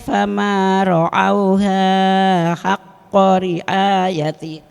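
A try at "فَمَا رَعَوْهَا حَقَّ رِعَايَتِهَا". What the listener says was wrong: Awas, hanya kepanjangan. Saya pikir mau wakaf di situ. Fama ra'auha haqqa riayatiha.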